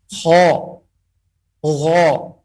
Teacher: kha dan huruf gha keluar daripada tenggorokan yang paling atas, maka kita memfokuskan, mengetahui makharijnya, kita memfokuskan kepada tenggorokan yang paling atas ini.